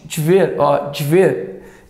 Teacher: esse D tanto que o e sai quase com um I